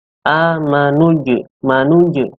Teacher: Ini huruf jimnya yang disukun atau dibaca mati, yaitu amanuj. Manuj, qalqalah sughra dipantulkan secara ringan, karena qalqalah sughra ini artinya adalah dipantulkan tetapi ringan.